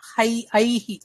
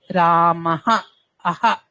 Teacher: సో విసర్గ ఏ గుణింతం ఉంటే ఆ గుణింతం యొక్క సౌండ్ తీసుకుంటుంది